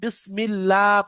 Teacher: দেখেন এখানে বিসমিল্লাহ, কেউ যদি বিসমিল্লাহ পড়ে ভুল হবে, কারণ আপনারা কায়দা পড়ে নিয়েছেন আল্লাহ শব্দের ডান দিকে জের আসলে আল্লাহ শব্দকে লা পড়তে হয়, অর্থাৎ বারিক করে পড়তে হয়।